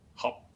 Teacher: The third character is also an oblique tone character because it is pronounced as hop, an entering tone.